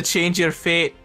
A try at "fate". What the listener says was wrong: Sounds like you're saying feet.